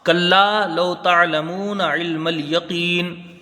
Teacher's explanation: آیت نمبر 5، کلا لو تعلمون علم الیقین، کلا ایک الف کی یہاں مقدار رہے گی، کاف کو لام سے ملا کے جلدی پڑھا جائے گا، اور لام میں ایک الف کی مقدار رہے گی، الف مدہ ہے۔ لو یہاں واو لین ہے، حروف مدہ سے کچھ کم اس کی مقدار رہے گی